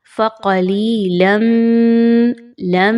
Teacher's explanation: آپ نے یہاں پر میم کی آواز میں غنہ کرنا ہے، کلیئر اس کو پڑھنا ہے لیکن غنے کے ساتھ پڑھنا ہے